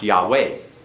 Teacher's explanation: the accent's actually on the last syllable of Yahweh. · It's accented on the last, it's not accented on the first.